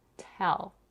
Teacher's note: In the word tell, we have an aspirated t.